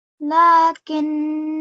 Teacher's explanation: even though it's not heard in continuous recitation, when we pause, the final alif will be heard.